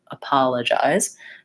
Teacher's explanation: making sure that you're using the correct stress pattern short long short short